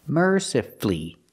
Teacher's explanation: You have two syllables before F-U-L-L-Y, and the stress is on the first syllable. So the U is silent. You don't hear it.